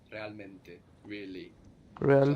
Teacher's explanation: the air that we put on the end of real we don't need it anymore we're already ending in a vowel so we lose it